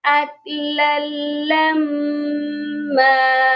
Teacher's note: میم مشدد پر ہمیشہ غنہ ہوتا ہے تو یہاں پر غنہ بھی لازمی کرنا ہے